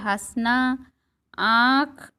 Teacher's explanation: इसका उच्चारण अनुस्वार की अपेक्षा हल्का होता है। इसका उच्चारण करते समय नाक और मुंह दोनों से हवा निकलती है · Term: अनुनासिक